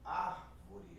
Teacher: A antepenúltima sílaba sendo tônica, como é o caso de árvore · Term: Pró-paroxítona